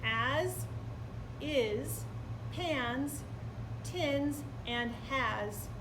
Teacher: all of those words have the z sound in the final space and the final placement